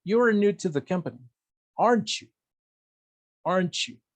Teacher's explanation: La entonación de tu tag va a depender de qué tan seguro estés de tu statement. Si estoy casi seguro de que you're new to the company, de que eres nuevo en la compañía, mi entonación va a ser descendiente, porque estoy casi seguro. · El you va a ser con entonación descendente.